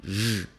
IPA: ʒ